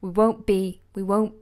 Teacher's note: won't and because I got another strong and plosive sound here I'm ignoring that T